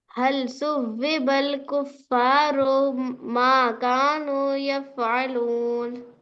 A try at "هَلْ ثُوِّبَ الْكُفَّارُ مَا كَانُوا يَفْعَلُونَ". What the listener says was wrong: रॉ खींचे क्या देखें यहाँ पे।